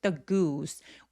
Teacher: 똑같은 오지만 얘는 으 소리고요. 그리고 스는 입술 쭉 내밀어서 the goose 우 하면서 굉장히 길게 소리 내 주세요